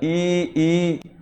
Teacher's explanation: ई में ना हमारे होट फैले हुए होते हैं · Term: संवृत स्वर